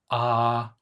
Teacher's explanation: your jaw is open, your tongue is sitting towards your throat, and there's a big gap between your tongue and the roof of your mouth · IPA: ɑː